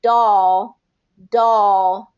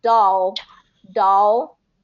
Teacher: my tongue doesn't come up and touch the roof of my mouth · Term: dark L